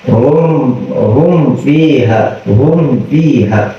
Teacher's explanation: ketika kita mengucapkan huruf fa itu sama kayak kita mengucapkan huruf mim, sama-sama makhrajnya ada di bibir. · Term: izhar syafawi